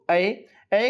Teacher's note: ऐ के उच्चारण स्थान का नाम क्या होता है कंठ तालव्य से यह बोला जाता है